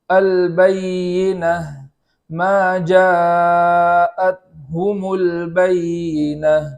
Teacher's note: وقف میں جو گول تا ہوتی ہے وہ ہائے ساکنہ سے بدل جاتی ہے. اس لیے اس ہائے ساکنہ کو خوب ظاہر کر کے بحالت وقف ہم پڑھیں گے.